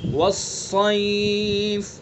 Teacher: یا لین ہے، یہ یا لین معروف پڑھی جاتی ہے